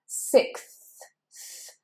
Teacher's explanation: You don't want it out too far, but you want to make sure you put it and you press it slightly against your top teeth, and you blow air between the tongue and the top teeth